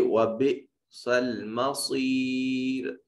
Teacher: وَبِئْسَ الْمَصِيرُ صاد کو مفخم ادا کریں، یہ حرف مستعلیہ ہے